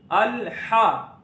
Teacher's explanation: हमजा जबर लाम अल। हा के ऊपर जबर है, मुंह खोल के पढ़ेंगे, लंबा करके नहीं पढ़ेंगे। हा जबर हा, अल हा।